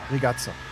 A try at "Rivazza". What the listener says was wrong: Rivazza with a V. Just Rivazza.